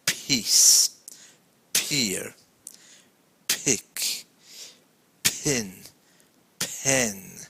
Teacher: it's formed like a short puff of breath from the mouth